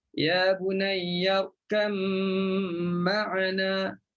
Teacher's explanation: Kita masukkan ba dalam mim. Okey, masukkan ba dalam mim. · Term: Idghamlah